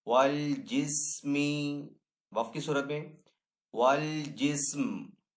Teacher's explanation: وقف کرنے کی صورت میں یہاں پہ میم کو ہم ساکن کریں گے